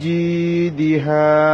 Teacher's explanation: জি একালে টানতে হবে, জেরের বাম পাশে ইয়া সাকিন। দিহা দা টান নাই, হা একালে টানতে হবে, জবরের বাম পাশে খালি আলিফ।